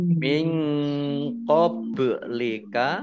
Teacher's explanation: nun sukun bertemu dengan huruf qaf, bacaan ikhfa dibaca samar-samar. Ba sukun bacaan kolkolah dibaca memantul, ditampakkan pantulannya.